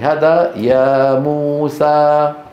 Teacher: الطول هو المد بمقدار 6 حركات، بين قوسين 3 أضعاف الطبيعي